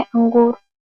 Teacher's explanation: उच्चारण मुख से और बाद में नाक से होता है। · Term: चंद्रबिंदु